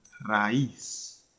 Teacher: raíz tiene una vocal tónica que es la I